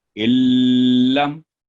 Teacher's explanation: نون بالکل سائلنٹ، کوئی اس کی آواز نہیں آئی، ڈائریکٹ الف لام کے ساتھ جا کے ملا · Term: ادغام کامل